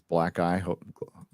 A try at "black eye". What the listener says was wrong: Black eye, not black guy, guys.